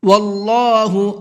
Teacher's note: اللہ کے لام کو پر کر کے پڑھیں گے